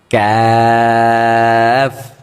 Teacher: কাফ এটা মুখ থেকে হবে গলা থেকে না